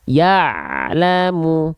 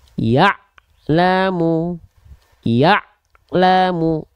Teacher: dia sifatnya bukan eh bukan rokah bukan mengalir suara tapi tawasut sedikit saja aliran suara yang dialirkan ketika kita melafalkan Ain sukun